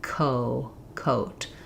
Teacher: So when I'm saying co, my mouth can already be kind of open for that O, and I'm just lifting the tongue in the back